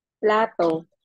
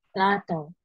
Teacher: gawin yung clear yung plato. Dapat hindi siya nasal. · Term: nasal tone